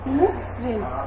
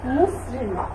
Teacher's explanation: এখানে রিকারটা থেকে থাকবে, রিকারের কারণে কোনো হেরফের হবে না, শুধুমাত্র রিকার দেওয়ার কারণে আমার ময়ের উচ্চারণটা কি হয়ে যাবে, ওয়ের মতো হয়ে যাবে।